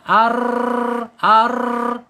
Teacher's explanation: Ketika bergetar saja salah, harus diinhirabkan. Kemana condongnya lidah kita ketika bergetar? Ditarik ke dalam ya. Dan getarannya tidak boleh melebihi dari 2 ya. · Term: takrir